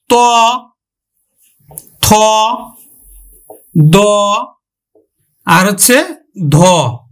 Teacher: এই দন্ত ব্যঞ্জন উচ্চারণে সক্রিয় ভূমিকা পালন করে কিন্তু জিভের ডগা আর উপরের পাটির দাঁত পিছনের অংশ নিষ্ক্রিয়ভাবে পালন করে।